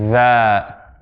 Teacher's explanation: for the dhal, there's vibration going on in the vocal cords, right here.